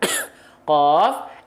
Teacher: pink ini disebut dengan langit-langit yang lunak ya Nah pertemuan kan pangkal lidah teksturnya lunak ketemu sama langit-langit yang lunak juga maka lunak dengan lunak akhirnya mengakibatkan tidak ada percikan nafas enggak keluar ada pergesekan nafas keluar di sana oke nah kalau